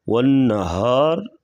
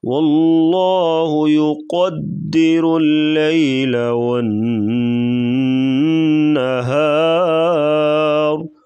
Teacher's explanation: والنہار آخر میں را کے اوپر زبر ہے تو را کو پر پڑھیں گے وقفاً اور را کو ساکن کریں گے۔